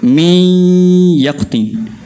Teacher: Jangan panjangkan kasrah tu seakan-akan menjadi huruf ya. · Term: gunnah